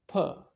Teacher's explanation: The lips close at the beginning when you pronounce the sound pur.